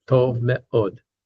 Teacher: me'od, with the accent on the od part.